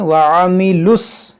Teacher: ये लाम को स्वाद से मिला देंगे, ये दोनों, ये वाव, ये दोनों अलिफ, ये लाम नहीं पढ़ा जाएगा।